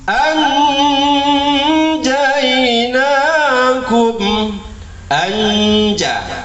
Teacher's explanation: Samar-samar nun matinya dengan huruf yang sesudahnya. Samar-samar, dan itu disertai dengung ya, disertai dengung. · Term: ikhfa